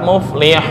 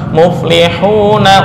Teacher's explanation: baru contoh muflihun asalnya adalah hidup muflihun muflihun muflihuna dibaca muflihun karena waqaf boleh dibaca enam harakat muflihun tapi ketika wasal enggak boleh lebih dari dua harakat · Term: aridili sukun